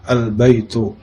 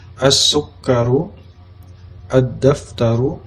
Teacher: huruf syamsiyah, huruf lamnya dibaca dengan idgham atau melebur ke huruf selanjutnya